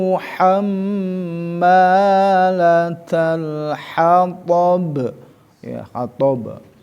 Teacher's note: Nah, ini yang perlu diperhatikan sisi pengucapan makhraj dari ha ya, wastol halki di tengah-tengah tenggorokan, bukan di bawah, bukan juga di atas adnal haki, tapi ini harus betul-betul ha-nya kecil, ha ya.